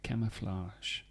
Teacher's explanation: And of course, our friend the Schwa in the middle there.